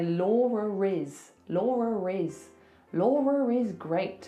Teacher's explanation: that schwar sound sometimes is spelled like e r so if I have to link my name to something else that's a vowel I have to put an r in there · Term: intrusive R